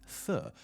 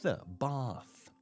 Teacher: for the TH sound at the very end, th, I have to actually bite my tongue almost.